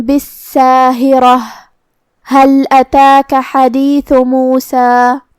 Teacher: ثا کو ہم زبان کے سر اور اوپر والے دانتوں کے اندرونی کناروں سے پڑھیں گے. کلمت موسیٰ کے آخری میں ہم اس پہ رکیں گے تو اس پہ مد الف سے رکیں گے مطلب ہم آخری میں دو مد کے برابر اپنی آواز لمبی کریں گے. · حمزہ کی ادائیگی حلق کے نیچے والی حصے سے ہے